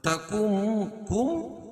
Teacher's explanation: نون کا میم میں ادغام ہوگا لیکن یہاں ادغام مع الغنہ ہوگا، یعنی غنہ کے ساتھ ادغام کریں گے.